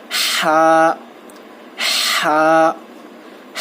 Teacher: ہا کو بھی جو ہے آپ تھوڑا کھینچنا چاہیے. ہا جو ہے حلق کے درمیانی حصے سے ادا ہوتا ہے